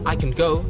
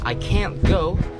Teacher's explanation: If they say I can go, usually the can is very soft and fast. If they say I can't go, the can't is stretched out a bit and they put an emphasis on it. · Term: the stress, stress